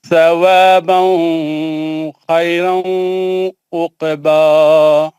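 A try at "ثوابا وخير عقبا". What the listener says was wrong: ثوابا وخیر، واو پڑھی ہے نا، ثوابا وخیر عقبا.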